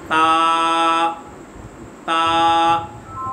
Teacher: ये ज़बान की नोक, ये ऊपर के जो दांत हैं, ऊपर के दांत जो सामने वाले हैं, इन्हें कहा जाता है سنایا الیا، سامنے والے جو دانت بلند ہیں، نیچے والے سامنے والے جو دانت ہیں انہیں کہا جاتا ہے سنایا سفلا، سامنے والے دو دانت۔ تو یہ زبان کی نوک اوپر کے دانتوں کی جڑ سے لگے گی۔